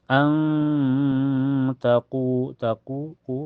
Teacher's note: an taquu taquu qu mad thobi'i. Karena wau sukun sebelumnya harakat domah di qu dibaca panjang dua harakat. · Karena makhraj nun dengan ta berdekatan ya. Cara bacanya nun sukunnya disamarkan ke ta dan ditahan sampai terasa ke hidung. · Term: ikhfa hakiki